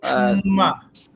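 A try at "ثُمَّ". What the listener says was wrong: সাটা নরম করেন। না, সু করলে তো সিন হয়ে গেল, সিন না, তা একদম সুম্মা।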